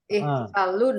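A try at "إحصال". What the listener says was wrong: Panjang. Panjang ya, jangan dipendek. Ada alifnya.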